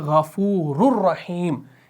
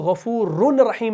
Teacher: इस रॉ को इस रॉ के साथ मिलाते हैं एक ही पेश के साथ, इदगाम कामिल है, तो हम पढ़ते हैं गफ़ूरुर रहीम।